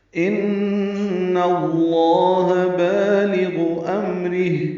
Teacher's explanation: ان میں نون مشدد ہے، اس پہ غنہ ہے